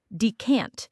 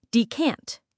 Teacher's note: For pronunciation, the stress is on the second syllable.